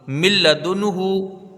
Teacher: پڑھا جا رہا ہے لام، لکھا ہے نون، تو یہ نون لام سے بالکل بدل جا رہا ہے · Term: ادغام بلا غنہ